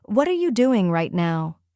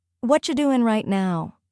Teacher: The are-you becomes cha, and the ending sound of doing blends smoothly into right now. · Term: words connect